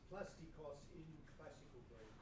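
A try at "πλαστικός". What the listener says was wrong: Plastiko. We don't say the S. Plastico.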